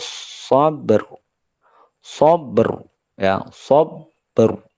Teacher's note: berakhir dengan bibir yang muncul, sabr, ya, dan rahang yang jauh karena sifat ketebalan dari huruf ra